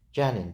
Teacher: Gəlin sözünə vurğu birinci düşəndə həm isim, həm də fel kimi düşünə bilər. Gəlin deyirik əmr şəklində vurğu əvvələ düşür. Biz bunu fel kimi düşünürük.